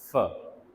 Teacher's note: अपर teeth, lower lip, तो ऐसी sounds को हम प्लेस के लिहाज से लेबियो डेंटल साउंड्स कहते हैं